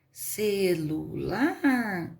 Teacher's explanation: celular a última é forte aqui é a última lar